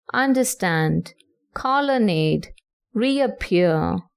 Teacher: Next, you have the anapest, in which you have 2 unstressed syllables followed by one stressed syllable, as in understand, colonnade, reappear.